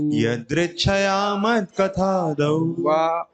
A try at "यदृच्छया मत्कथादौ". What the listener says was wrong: वाह भी होना चाहिए, मिस हो गया से, यदृच्छया मत कथा, तो कट रहा है ना बीच में,